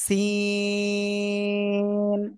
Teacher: ওই একই জায়গা থেকে উচ্চারণ হবে। জিহ্বার আগা, সামনে নিচে দুই দাঁতের পেটও আগার সাথে লাগাবো, লাগিয়ে অক্ষরটা উচ্চারণ করব চার লিপটা নিয়ে।